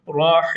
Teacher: besmelenin sonundaki Mim harfini yani cezimli yapıyorum Ve ondan önceki harfi meddi ariz yapıyorum